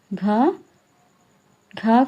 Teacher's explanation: घ का उच्चारण स्थान तालु नहीं बल्कि कंठ होता है। इसलिए यह जीहवा तालु से नहीं टकराती।